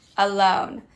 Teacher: this is what we call a schwa it changed from a to uh